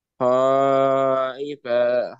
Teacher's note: Jadi harus dibaca panjang, jangan 2 harokat saja.